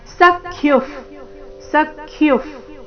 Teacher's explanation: ವಿಸರ್ಗದ ಉಚ್ಚಾರಣೆ ಫ ರೀತಿ